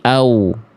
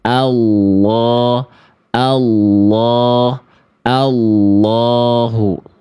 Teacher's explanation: Ya, di sini ada huruf hamzah, teman-teman sekalian. Dari huruf hamzah langsung masuk ke huruf lamnya. Ya, dari huruf hamzah ini kan a nih, dibacanya a.